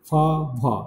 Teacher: the active articulator lower lip and the passive articulator upper front teeth